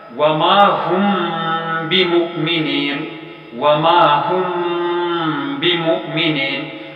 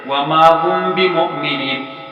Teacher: مثال دیکھیے، سورۃ البقرہ کی آیت نمبر 8 میں ہے وما ہم کے بعد بمؤمنین، ساکن میم کے فوراً بعد با حرف آیا ہے، تو ایسے میں ساکن میم کی آواز کو ہونٹ ہی ہونٹ میں قدرے چھپایا جائے گا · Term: اخفاء شفوی